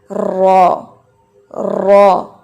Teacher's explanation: Simple جب را پڑھا جاتا ہے تو وہ ہیوی ہوتا ہے، اور دوسری بنیادی چیز اس میں تکرار ہوتی ہے، را را، ٹھیک ہے۔ · یہ تکرار، یہ وائبریشن جو ہے یہ اس کی صفت ہے، کوالٹی ہے